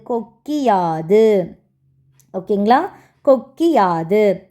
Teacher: முதல் எழுத்தாகக் கொண்ட சொற்கள் வரும்போது குற்றியல் உகரத்தில் உள்ள உகரம் இகரமாக மாறும் இந்த இகரம் தனக்குரிய ஒரு மாத்திரையில் இருந்து அரை மாத்திரை அளவை ஒலிக்கும் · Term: குற்றியல் இகரம்